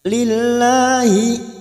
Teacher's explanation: lam jalalah yang sebelumnya ada harokat asro, lam jalalah kita baca tipis tarkik